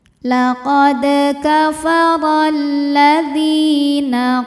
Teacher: Sebab alif lam menghadapi huruf syamsiyah yaitu lam. Maka alif lam tidak dibaca dimasukkan. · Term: alif lam syamsiyah